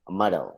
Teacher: metal का T sound है that changes to D sound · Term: flapping